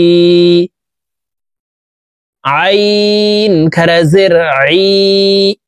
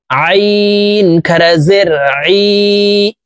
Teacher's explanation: আইন হরফকে হলকের মধ্যখান থেকে চাপ দিয়ে উচ্চারণ করতে হবে কারণ আইনের মখরাজ হলকের মধ্যখান থেকে হবে।